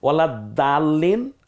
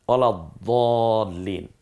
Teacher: দালটা বলার সময় একটু পাতলা হবে, উচ্চারণটা হালকা হবে, দটা বলার সময় মুখটা একটু গলাবে।